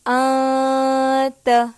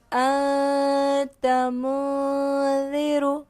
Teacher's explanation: نون کی آواز کو ناک میں چھپا کر پڑھیں گے، اس کو ہم اخفا کہتے ہیں